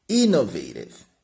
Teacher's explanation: Essa palavra, pessoal, innovative, eu começo, a tônica dela é no I, ó. Innovative, tá? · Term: sílaba tônica